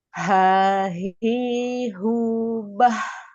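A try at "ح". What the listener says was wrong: Nah, itu udah naik ke tengah itu Ibu. Naik dia ke huruf ke tengah.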